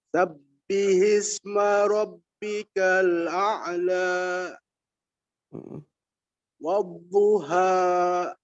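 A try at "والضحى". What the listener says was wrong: Masih. Ujungnya masih kayak ada koma. Lepas. Wadduha.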